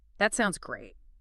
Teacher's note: Give it that upward inflection.